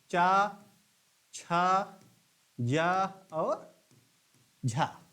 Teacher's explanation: फिर स्पर्श संघर्षी, जो स्पर्श भी करते हैं और संघर्ष भी करते हुए उच्चारण जिनका होता है, ये हैं चा वर्ग के प्रथम 4 वर्ण।